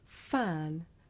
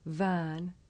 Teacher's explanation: the difference between this voiceless sound f and its voiced partner v